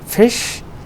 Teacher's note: So if you pronounce the word fish, it begins with f sound, which is a fricative, and sh sound, which is again a fricative. Both of them are fricatives, begins and ends with fricative.